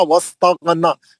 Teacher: मम बखीला वस्तगना, गैन मोटा, नून पे खड़ा जबर है, 2 हरकत।